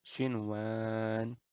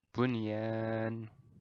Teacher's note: kita tidak ada melebur tidak ada dengungan Jadi ini dibaca jelas selayaknya izhar biasa